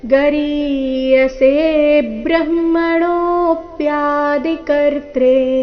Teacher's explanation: ರೀತಿ ಮೊದಲನೇ ಚರಣ ಇದೆ ನೋಡೋಣ ಎರಡನೇ ಚರಣ ಗರೀಯಸೆ ಬ್ರಹ್ಮಣೋಪ್ಯಾದಿ ಕರ್ತ್ರೆ ಗರೀಯಸೆ ಸೇ ದೀರ್ಘ ಹೇಳಿ ನಂತರ ಸೆ ಮೇಲೆ ಬದ್ಧವಾಘಾತ